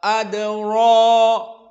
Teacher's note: Kenapa tafkhim pada darajat yang pertama adra. Pertama karena ra fathah. Yang kedua diikuti mad tabi'i.